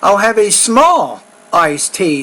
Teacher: we have to put a lot of emphasis on the word small because it's different from the word large